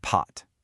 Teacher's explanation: Put your hand in front of your mouth and say the word pot. Feel that little explosion of air. That is the Chinese P sound. That puff of air is the whole difference.